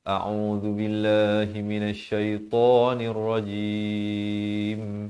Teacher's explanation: lafz jalalah dibaca nipis dua harakat